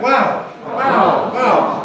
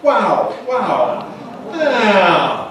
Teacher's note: Can you hear that fall? The voice starts high and comes down low.